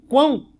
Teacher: E aqui você tem, ó, o an, que está sendo pronunciado com força, com intensidade, e esse o no final aqui, que está sendo pronunciado muito fraquinho.